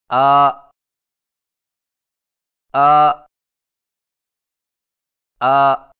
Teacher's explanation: حمزہ کی آواز حلق سے بغیر رگڑ کھائے نکلتی ہے